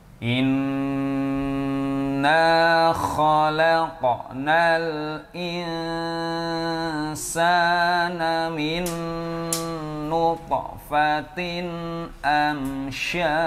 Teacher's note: nun bertasydid dengung yang lama